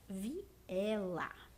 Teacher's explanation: Viela é um hiato, porque nós temos duas vogais, tanto o I quanto o E, eles são reproduzidos foneticamente de uma forma forte e, portanto, ambos são classificados como vogais.